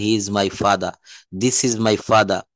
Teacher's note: শব্দের শেষে যদি কখনো আর থাকে, এই আরটা উচ্চারণ করা লাগে না